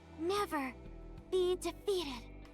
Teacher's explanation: She sounds very breathy, like out of breath.